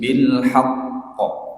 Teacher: Jadi ini qalqalah pada lafaz th bilhaqqo. Jadi ditahan dulu haqqo baru dikeluarkan karena ada tasdidnya di situ.